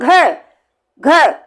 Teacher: फिर हम बोलते हैं घ, घ, बहुत सारी वायु बाहर निकलती है, यानी हमारे हाथ से वायु टकरा जाती है। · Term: महाप्राण